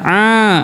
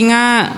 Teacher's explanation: Jadi enggak boleh berubah kalau memang ini kalau hidungnya ditutup. A itu enggak boleh berubah karena bukan dari hidung keluarnya Bapak, Ibu. Dari tenggorokan. A a. Kalau dari hidung jadi nga.